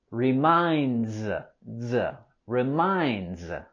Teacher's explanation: In the word reminds, we have a Z sound at the end